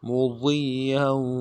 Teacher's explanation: گے، فَمَا اسْتَطَاعُوا مُضِيًّا، میم کو نرم سے ادا کرنا ہے، ضاد کو یا کے ساتھ ملانا ہے، ضاد کو موٹا کریں گے، یا کے اوپر تشدید ہے، زور دیں گے ، یا کے اوپر تنوین بھی ہے، اس تنوین کو آگے